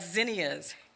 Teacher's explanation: z is a voiced consonant place your hand on your throat to feel a slight vibration